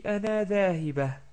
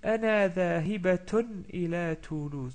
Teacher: comme je continue la phrase, je dis Ana dhahibatun ila Toulouse. Donc je prononce bien la ta marbouta